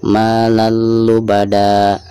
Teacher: pertama hilangkan suara tanwinnya lalu digantikan dengan bacaan mad 2 harokat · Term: mad iwad